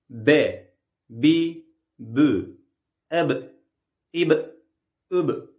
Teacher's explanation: B harfi dudakların birbirine hızlıca çarpmasıyla çıkar. İnce bir harftir.